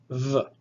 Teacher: Vita is pronounced like the V in the word vat. It is a labial, aspirate, vocalized.